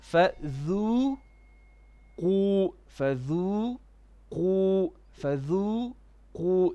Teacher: because dhal is a flat letter, we have to make it flat, and then qaf would be heavy.